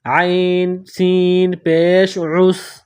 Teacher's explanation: اوپر جزم ہے تو عین کو سین کے ساتھ ملائیں گے، سین کو باریک پتلا کر کے پڑھیں گے، سین میں سیٹی کی آواز پیدا کریں گے